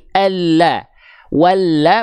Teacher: huruf lam itu dilafalkan dari hafatulisan dari samping lidah dari sisi lidah tapi bukan seluruhnya hanya samping lidah bagian depan yang kanan yang ini nih menyusur sampai ke ujung lidahnya lalu